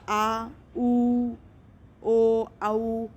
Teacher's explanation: जिहा का पश्च भाग ऊपर उठता है, पश्च स्वर कहलाता है।